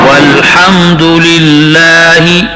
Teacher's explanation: یہاں لفظ اللہ کا لام باریک ہے کیونکہ لفظ اللہ کے لام سے پہلے زیر آیا ہوا ہے